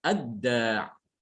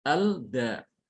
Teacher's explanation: Dibacanya ad-da, langsung diidghamkan lamnya ke dalam huruf dal